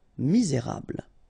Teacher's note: don't insist on the final E here. You get this bl sound at the end. Okay, misé, et because you've got this accent aigu, rable.